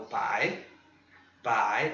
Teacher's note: lembra, segundo tom, ele é crescente